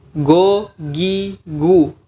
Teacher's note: makhraj atau tempat keluar huruf G dalam bahasa kita itu bukan pangkal tenggorokan tapi pangkal lidah